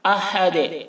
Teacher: ہا کو حلق سے ادا کریں گے اور دال میں قلقلہ